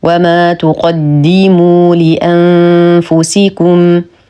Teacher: لدينا نون ساكنه وبعدها حرف الفاء فالحكم اخفاء حقيقي مع غنه كامله مرققه